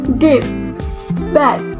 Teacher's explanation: oral passage is blocked by pressing the tongue tip against the alveolar ridge